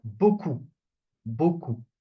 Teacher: The P is not pronounced